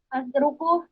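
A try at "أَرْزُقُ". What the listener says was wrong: Bukan azruku, tapi ar. Kebalik itu tadi. Zainya di pertama, azruku. Itu kan salah. Yang benar adalah ar.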